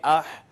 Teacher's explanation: اح سانس جاری رہے گا، آواز نیچی رہے گی۔ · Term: حروف محموسہ